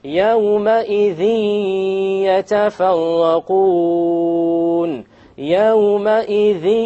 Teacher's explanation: there's a ghunnah. Okay, and there is no clear end sound.